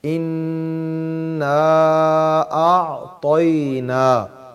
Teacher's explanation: اور یہ جو الف ہے اس کو جب ادا کرنا ہے اِنَّا پہلے غنہ پورا کرنا ہے پھر اس کو نا کہنا ہے